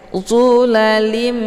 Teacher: Nah, untuk hukum idgham ini dibacanya tanwinnya dileburkan ke dalam huruf mim ya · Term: idgham bi gunnah